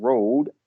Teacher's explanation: R, as in road, is a post-alveolar. The tongue curls back into the mouth, but does not touch the roof of the mouth.